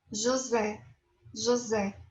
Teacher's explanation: Esta S cambia a fonética para Z.